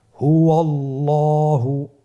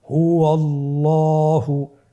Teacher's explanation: আল্লাহ শব্দের আগেই, মানে আল্লাহ শব্দের দ্বিতীয় লামের আগেই আপনার জবর এসেছে, তাহলে আল্লাহ শব্দের দ্বিতীয় লামটিকে পোর করে পড়তে হবে।